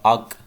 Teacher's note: حمزہ زبر کاف اک، تو آواز جو ہے وہ ایسے محسوس ہوگی کہ رپیٹ ہو رہی ہے، لوٹ رہی ہے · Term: قلقلہ